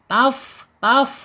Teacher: Asyafatainnya yaitu ujung gigi seri atas ya menyentuh perut ya perut bibir perut bibirnya yang bawah ya. Jadi ee bukan perut bibir ujung tapi bawahnya taf taf ya.